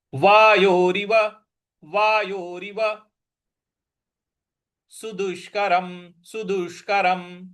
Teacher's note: सु, स पर छोटी उ की मात्रा है, दु, द पर छोटी उ की मात्रा है, और षटकोण वाला श है, तो जीभ को मूर्धवा पे लगा करके बोलना है।